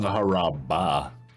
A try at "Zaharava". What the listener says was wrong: No B's.